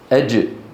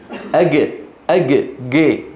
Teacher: الجيم من وسط اللسان